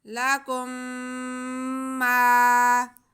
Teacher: میم ساکن کے بعد میم آ جائے تو پھر یہاں پہ ادغام میں شفوی ہوتا ہے، یعنی میم کو ہم میم سے ملا کے پڑھتے ہیں